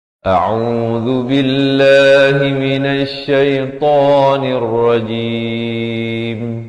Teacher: Dan lafz jalalah dibaca nipis, 2 harakat.